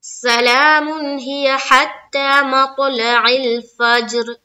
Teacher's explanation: را کے نیچے زیر کی حرکت ہے, زیر کو جلدی پڑھیں, تھوڑا بھی نہ کھینچے, معروف پڑھیں, مجہول آواز سے بچے